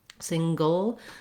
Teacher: We have maybe a little bit of a schwa, an sound in there, but basically this is a syllabic L, meaning the L in itself makes a syllable. It sounds like ol, it's the dark L, single. · It sounds like ol, it's the dark L, single. So I'm going to move very quickly from the g in the back to the ol with the tongue lifting in the front